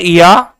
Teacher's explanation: ये बनता है ई के साथ आ से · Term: अर्धस्वर